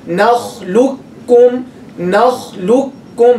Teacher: You drop the qaf completely. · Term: complete idgham